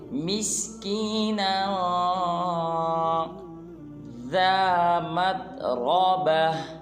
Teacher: آخر میں نون کے اوپر 2 زبر ہے، لہٰذا نون میں اخفا کریں گے، یہ ان کے ناک میں آواز لے جائیں گے